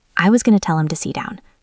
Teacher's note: To usually gets reduced to ta. Sit has a stopped T because down starts with a D, so it sounds like see down. So the phrase is to see down.